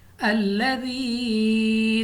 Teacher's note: یا ساکن سے پہلے زیر، یا مدہ 2 الف تک 2 سیکنڈ تک کھینچ کر پڑھیں گے